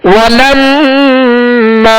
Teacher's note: میم مشدد میں غنہ کریں گے اور میم کے آگے الف مدہ ہے, الف سے پہلے زبر ہے لہذا الف کو ایک الف کی مقدار میں کھینچنا ہے.